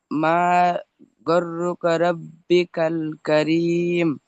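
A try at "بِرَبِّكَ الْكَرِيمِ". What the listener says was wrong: বাজের বি ছেড়ে গেল। বিরব্বিকাল।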